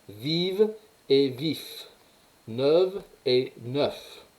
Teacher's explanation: Au féminin, vous avez des consonnes voisées, hein, et des consonnes non voisées.